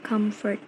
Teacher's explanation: The word comfort has a primary stress in the first syllable, com.